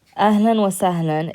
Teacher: what you're doing is you're pronouncing it with an n at the end.